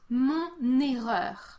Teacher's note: I pronounce the N and carry this N sound to the next word, which kind of makes it sound like the noun starts with an N